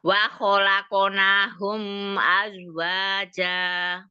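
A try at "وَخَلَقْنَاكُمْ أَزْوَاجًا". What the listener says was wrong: bukan Hum tapi kum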